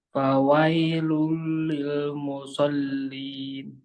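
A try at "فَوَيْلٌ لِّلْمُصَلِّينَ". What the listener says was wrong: Bagus ya. Jadi pengucapannya pas itu.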